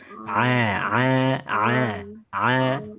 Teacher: ain hati-hati tidak boleh masuk ke rongga hidung, tidak boleh Alamin. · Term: Huruf Ain